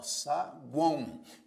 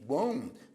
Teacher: tritongo nasal Quando uma parte do som sai pela boca outra parte pelo nariz